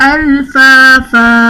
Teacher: فا پر 2 زبر کی تنوین ہے، جو کہ وقف کی صورت میں الف سے بدل دی جائے گی، یعنی یہاں پر الف مدہ کا قاعدہ بن جائے گا.